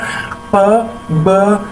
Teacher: जिस तरह जब हम ब कहते हैं तो हमारे दोनों होंठ आपस में मिल जाते हैं तो हवा रुक जाती है, लेकिन एकदम ही वो हवा जो होती है वो एकदम रिलीज होती है। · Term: प्लोजिव्स